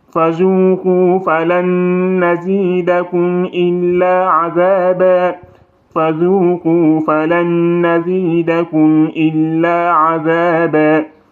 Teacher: Ici, il y a 2 N qui se rencontrent. Donc ici, il faut faire une nasalisation au niveau de la lettre N parce qu'elle porte shadda